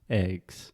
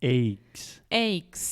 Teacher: in the Midwest they tend to use a diphthong